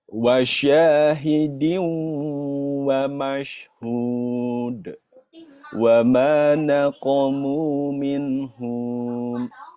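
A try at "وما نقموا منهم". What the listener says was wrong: Humnya pendek. Pendek. Minhum.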